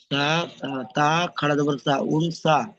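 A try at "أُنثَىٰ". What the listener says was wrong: মিম তা, তা বলছেন কেন, সা আছে তো। সা খাড়া যাবার সা, উনসা।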